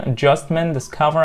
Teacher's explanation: three syllable words stress on the second syllable